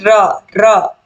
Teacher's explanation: मुख द्वार जीव की नोक से शीघ्र ही बंद होता है और दो तीन बार खुलता है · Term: लुंठित